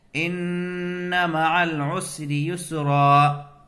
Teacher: نون اور میم پر تشدید ہو تو غنہ ہوگا۔ غنہ ایک الف کی مقدار ہے۔